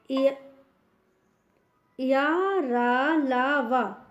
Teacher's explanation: अंतस्थ का अर्थ है बीच में स्थित होना। इनका उच्चारण स्वरों और व्यंजनों के मध्य का है, इसलिए इन्हें अंतस्थ व्यंजन कहते हैं।